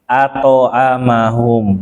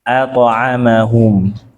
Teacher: Jawabannya adalah fathah dengan sukun itu beda. Bedanya kalau fathah itu dia satu harokat, kalau sukun itu pada qalqalah ini dia setengah, maksudnya lebih cepat. Iya memang mirip tapi lebih cepat.